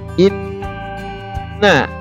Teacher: Innanya itu harus kalian baca dengung karena di situ ada nun bertasydid. Kalau nun bertasydid itu harus dibaca gunnah.